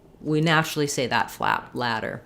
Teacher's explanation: I usually write it as a D because when we naturally will say words like, for example, ladder, we naturally say that flap, ladder. A flap is somewhat between a T and a D where the voice is on, the tongue goes up, but I don't stop the air. So rather than ladder, just like we were talking about with those unreleased stops, my tongue just goes up, does a light touch to that spot behind the teeth, and then releases.